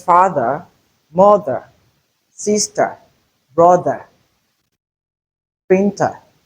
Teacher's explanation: So the schwa sound is realized mostly where we have ER at the end of words. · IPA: /ə/